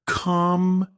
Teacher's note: in the word computer, we stress the second syllable